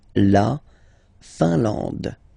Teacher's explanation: IN here, nasal, un. AN, nasal, en. And then D, final not pronounced.